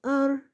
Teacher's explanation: زبان کا کنارہ اور پشت جب ثنایا اور ربائی کے مسوڑوں سے لگے تو را ادا ہوتا ہے